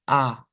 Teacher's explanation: la a del español es con la lengua hacia delante